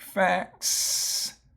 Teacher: the consonant in front of the S is one of the voiceless consonants